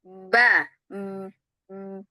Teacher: Ya, jadi ba-nya jangan disamber ya. Harus ada dorongan dulu di awal sebelum dibuka.